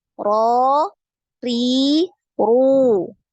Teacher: Jadi ketika ro itu naik, ri turun, dan ru itu naik lagi.